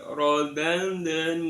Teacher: Kemudian yang kedua rodadnahu. Rodad ada dal sukun terletak di tengah kalimah, maka dibaca qalqalah sughra, qalqalah kecil